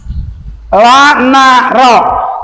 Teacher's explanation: ujung lidah dengan langit-langit yang atas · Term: nun